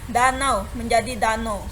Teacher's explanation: Diftong AU diucapkan O.